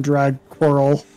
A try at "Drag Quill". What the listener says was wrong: There is no R. Read, motherfucker.